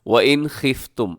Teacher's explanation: नून को ज़ाहिर करके बग़ैर गुन्ने के हम इसको तेज़ी के साथ अदा करेंगे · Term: इजहार हलकी